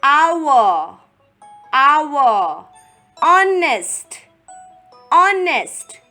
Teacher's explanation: the word is starting with a consonant, H, but H is silent